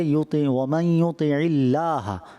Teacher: اللہ کے لام سے پہلے جب زیر آ جائے تو اس کو پھر باریک پڑھتے ہیں